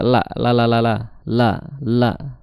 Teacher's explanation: makhrajnya adalah di ujung lidah ya. Ujung lidah bertemu dengan gusi. La la ya seperti lamnya Indonesia.